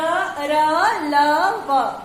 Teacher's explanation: इनका उच्चारण करते समय हमारे मुख से जो ध्वनि निकलती है वो बिना किसी रुकावट के बाहर निकलती है।